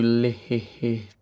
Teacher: It's called the lateral releasing T, where I release out the lateral parts of my tongue, the sides of my tongue